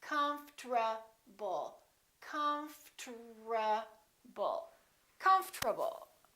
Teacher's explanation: the O disappears but then there's one more very strange thing that happens and that's the RT becomes a TR they change positions